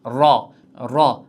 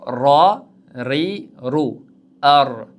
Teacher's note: o'sha tanglaydan sal pastroqda, ya'ni yuqori old tishlarning milkidan sal teparoqda ro harfi tegib chiqyapti. Erkin, yengil holatda talaffuz qilishimiz kerak bo'ladi.